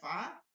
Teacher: নিচের ঠোঁটের পেট উপরের দুই দাঁতের গড়ার সঙ্গে আগার সঙ্গে লাগায়